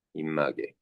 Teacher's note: 다른 비읍이 미음으로 바뀐다. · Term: 비음화